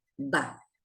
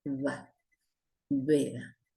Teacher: En cambio, cuando está al principio, suena como b suave y se pronuncia con los labios levemente abiertos